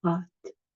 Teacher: Et j'aime les pâtes, normalement on dit les pâtes, on ouvre plus. Donc quand on a le son ouvert, on prononce aussi un peu moins vite. On va accentuer sur ce A, parce que le temps d'ouvrir la bouche, c'est un son qui dure plus longtemps.